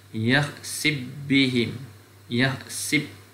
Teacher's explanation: dibaca idgham fa kepada ba, yakhsib bihim, yakhsib, fa masuk pada ba, yakhsib.